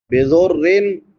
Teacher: نون تنوین ہے را کے نیچے اور بعد میں حروف حلقی میں سے ہا ہے تو یہاں پہ اظہار ہوگا